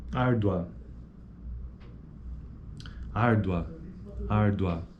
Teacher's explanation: Ele é crescente porque, ó, árdua, árdua, é a segunda vogal que tem proeminência acentual. Esse U, ele praticamente some. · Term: ditongo crescente